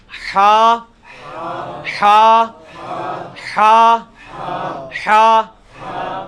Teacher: یہ وسط حلق سے یعنی حلق کے درمیان سے نکلتا ہے. یہ کبھی آپ وہ گلے والی ٹافی کھائیں نا، وہ والی آواز ایکزیکٹ بالکل کلیئر وہاں سے جو نکلتی ہے نا، یہ ہا کا مخرج وہی ہے. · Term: حلوائی والا جو ہا